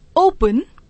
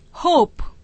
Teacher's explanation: ओ बराबर ओ, दीर्घ उच्चारण है यहां पर